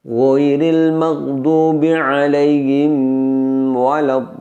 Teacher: Pada alaihim waladdallin di situ saya dengungkan terlalu lama. Jadi yang benar adalah tidak boleh disamarkan dan didengungkan lama. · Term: dengung lama